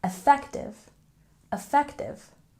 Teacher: with a stress on the second syllable